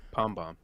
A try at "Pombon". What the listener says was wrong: Pombon. Pombon. Yeah, bon. Yeah, with an N. Like a bonbon? Like a pom-pom and a bonbon. So pombon.